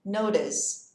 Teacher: Uma dica de pronúncia, esse T vai virar um som de D bem leve